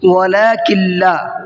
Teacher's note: کاف کو ڈائریکٹ لام میں ملا کر کے پڑھیں گے